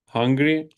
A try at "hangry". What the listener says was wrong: it's not hungry. Hungry is spelled with a U instead of an A. Yes, hangry. Hangry.